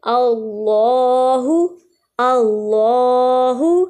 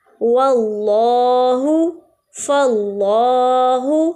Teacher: اس میں جلالت یعنی اللہ کے نام سے پہلے زبر آ رہی ہے، اس لیے ہم نے ان کو موٹا ادا کیا ہے